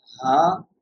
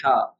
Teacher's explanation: Ha from the bottom of the throat, ha from the middle of the throat.